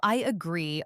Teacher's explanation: This happens when a word ends in a vowel sound and the next one begins with a vowel sound. We often add a small i or w sound in between to make it smooth. For example, I agree often sounds like I yaggree. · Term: Vowelto vowel linking